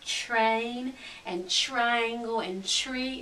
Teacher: would say triangle we don't say a t and an R when we say it like in the word train and triangle and tree it sounds like a CH